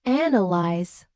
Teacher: native speakers say analyze with clear stress on the first syllable